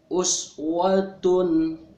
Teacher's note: Ada tanwin ya. Tanwin bertemu dengan huruf H. Itu namanya idhar. Jadi si tanwinnya dibaca jelas.